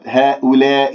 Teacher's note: من غير أن أميل صوت الألفات